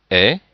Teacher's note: le son est, donc qui est un peu plus ouvert que e